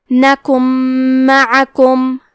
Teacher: ادغام کا معنی ہے حرف کو حرف میں داخل کرنا، تو ہم نون ساکن کو میم میں ملا کے غنہ اور تشدید کے ساتھ یہ حکم کو ادا کریں گے